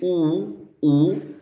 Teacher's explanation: It's going back. When you say oo, oo, your tongue is at the back of the mouth. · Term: back vowel sound